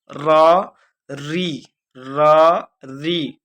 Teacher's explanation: मूर्धा से इस र और री का उच्चारण स्थान होता है।